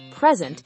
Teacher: When we stress the first syllable present, [music] it's a noun meaning a gift.